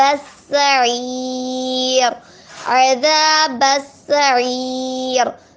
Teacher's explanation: عین یا زیعی جو ہے وہ یا مدہ ہے، یا مدہ کو ایک مدار کھینچ کے پڑھیں گے